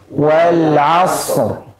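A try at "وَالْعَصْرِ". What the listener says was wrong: Ra-nya jangan lupa tebalkan.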